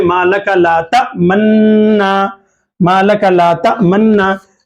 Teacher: نون کو غنہ کرتے ہوئے ہونٹوں کو آگے بڑھتے ہوئے مالک لا تأمنا، مالک لا تأمنا، یہ نون کی آواز کو نون میں ملا دیا، غنہ کریں گے، منونا کو مننا پڑھ دیا آپ، نون کی آواز نون میں گھم گئی، غنہ ہو گیا، تو اس کو اشمام کہتے ہیں۔